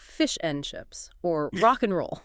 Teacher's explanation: the most common one of all is and. It simply becomes in.